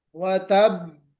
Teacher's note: जब हम रुकेंगे तो व तब कलकला होगा मगर शद्दा के साथ, व तब, व तब इस तरह नहीं पढ़ेंगे बल्कि व तब, यानी बहुत प्रेशर के साथ।